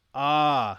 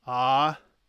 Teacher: the long a is literally long and the short a is just literally the same sound shorter